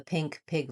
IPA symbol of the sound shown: ɪ